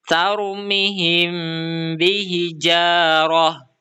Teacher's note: mim sukun bertemu ba dan dibaca dengung samar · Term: ikhfa syafawi